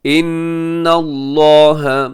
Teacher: इन्नल्लाह, यहाँ नून मुशद्दद है, गुन्ना कीजिएगा